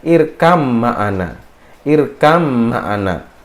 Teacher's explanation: itu di harus dileburkan ke huruf mim setelahnya jadi banyak hilang qalqalahnya hilang dileburkan ke huruf mim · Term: idgham mutaqaribain